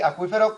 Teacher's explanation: Son dos cerradas, pero con el golpe de voz. Luego es un hiato. Y si es un hiato, son vocales, son sílabas diferentes.